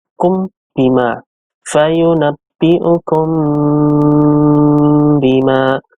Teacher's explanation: Fayunabbi'ukum bima. Artinya dibaca samar-samar dan syafawi artinya keluarnya dari bibir. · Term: ikhfa syafawi